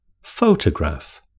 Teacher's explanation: Photograph has three syllables with the stress on the first syllable.